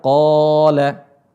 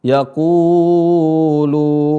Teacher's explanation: qa-nya dibaca panjang karena ada huruf mad di depannya